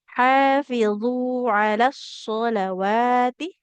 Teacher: Karena di atas wawunya ada harokat fathah. Nah, maka yang panjang bukan lamnya tapi wawunya. Nah, fathah di atas waw bertemu dengan alif kecil, maka wawunya panjang. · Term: as-sholawati